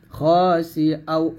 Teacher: খা না বলে খ বলতে হবে মোটা করে